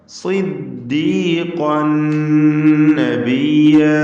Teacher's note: സ്വാദിന് കുറഞ്ഞ തഫ്ഖീമാണ് കസ്റായതുകൊണ്ട് നൽകുക. ഖാഫിന് പൂർണ്ണമായ തഫ്ഖീം, ഖാഫിൻ്റെ തൻവീനിന് ശേഷമുള്ള നൂനിൽ പൂർണ്ണമായും ലയിപ്പിച്ച് മണിക്കണം.